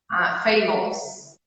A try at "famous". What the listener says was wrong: Só que tá errado. Não é assim que a gente fala. Agora, ao invés de falar ous, fala só us no final. Basicamente, ao invés de falar ous, tu fala us.